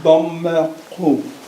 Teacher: with the click in the back of the throat